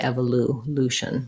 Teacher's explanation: americans just say evolution no glide